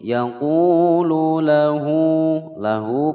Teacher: Yaqulu lahu panjang 2 ketukan mad silah qasirah